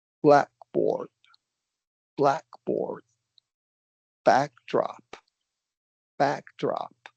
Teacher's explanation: So, this is where pitch is even more important. You have to go up for the first um syllable. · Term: primary